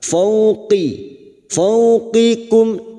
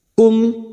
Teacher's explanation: hati-hati pada saat membunyikan huruf qof dan Kaf huruf qof huruf istilla sehingga dibaca tebal